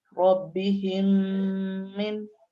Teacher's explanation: یہ میم ساکن کو آنے والے میم میں داخل کر کے پڑھنا ہے. اس کی مقدار کشش بھی 1 الف کے برابر ہوگی. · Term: ادغام شفوی